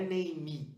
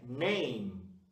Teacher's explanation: Só que não se faz esse som de I no final, não é name, é name.